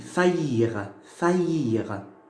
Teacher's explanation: Au milieu du mot, j'entends le ya. Donc j'ai mis le J, ok?